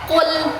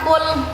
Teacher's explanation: Tapi dia membedakannya kalau huruf qof pangkal lidah sedikit ke belakang. Kalau huruf kaf pangkal lidah sedikit ke depan.